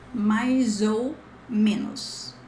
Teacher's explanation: ChatGPT put this as mais, but mais, there's a lot of S sound here. It's more like a Z, especially when you merge the sound, like mais ou.